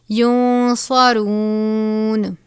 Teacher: نون ساکن کے بعد صاد ہے، اخفا کا قاعدہ لگے گا. صاد حروف مستعلیہ میں سے ہے اس لیے صاد کو پر بھی پڑھا جائے گا